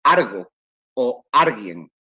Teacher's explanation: la L en posición implosiva cambia a R